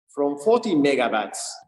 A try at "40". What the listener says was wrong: I mean, first of all, you can pronounce the word 40 a little bit, the number a little bit more clearly. So he used the true T, 40, T. True T sounds more like 14. True T comes at the beginning of stressed syllables, 40. But he's using it in an unstressed syllable, so it's working against.